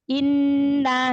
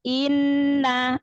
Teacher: Hati-hati di hamzah yang langsung ketemu nun ya. Jangan seperti memanjangkan harokat hamzahnya. Langsung masuk ke nun tasydid. Inna. Jadi jangan inna.